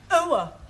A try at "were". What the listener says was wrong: Almost, try again, but this time, don't say ower, just were. Were.